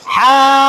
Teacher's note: ফার উচ্চারণ করার সময় উপরের দাঁত আর নিচে ঠোঁট ধরতে হবে